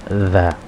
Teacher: Kalau kesulitan melafalkan huruf dzu, ya, huruf dzu ini makhrajnya adalah, tempat keluar hurufnya adalah dengan cara ujung lisan kita tempelkan kepada gigi seri atas. Gigi seri atas sehingga keluar sedikit.